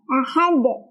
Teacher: jadi sukun karena Dal sukun Itu adalah huruf qalah maka dia cara bacanya adalah dipantulkan dan pantulannya besar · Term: Qalqalah kubra, qalqalah kubra